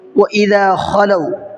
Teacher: خلو میں خا کو تھوڑا سا حلق سے نکال کے پڑھنا ہے، کھلو نہیں پڑھنا ہے، اس میں فرق ہوتا ہے خلو اور کھلو میں۔